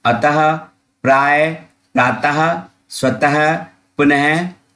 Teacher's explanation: जब आप विसर्ग का उच्चारण करेंगे तो उच्चारण करते वक्त अंत में ह की आवाज आएगी